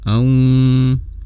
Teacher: Jadi ada yang keluar lewat mulut dan ada yang kita keluarkan lewat rongga hidung kita. Kalau yang seharusnya suara waw seperti ini, au, tapi di bagian ini suaranya aung, ada gunnahnya